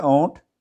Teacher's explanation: ओंठ भी कहते हैं, होंठ भी कहते हैं, इसमें अनुनासिकता है